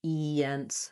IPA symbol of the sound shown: i